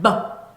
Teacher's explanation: B의 소리는 버 하고 짧게 나는데 요걸 유지되지 않는 소리라고 해요.